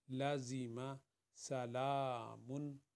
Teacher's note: لام کے ساتھ الف ہے، اس کو 2 حرکت کے برابر پڑھیں گے۔